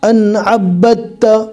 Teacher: با کو ڈائریکٹ تا سے ملانا ہے، دال کو چھوڑ دینا ہے